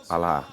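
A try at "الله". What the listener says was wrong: It's pronounced Allah. The L needs to be doubled.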